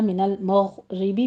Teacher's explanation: غین کی آواز آپ نے ادنا حلق سے ادا کرنی ہے، اس کو پر کرنا ہے